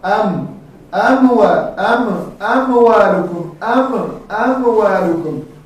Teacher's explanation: وقتی که میم تلفظ میکنیم میم در لب‌ها تلفظ میکنیم صدا میایه در خیشوم همو صدا در خیشوم که آمد همو چی است همو غنه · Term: ناقص الغنه